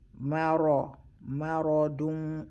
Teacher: we hide the noon in the tanween, we hide the noon. When you're hiding the noon, we hide it with a flat mouth, because the next letter is a flat letter, which is the fa is a flat letter.